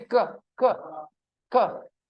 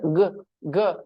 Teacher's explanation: when you say ka, there is no vibration, and say g, g, there will be vibration.